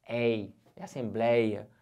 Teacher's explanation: Olha o ditongo aberto ei.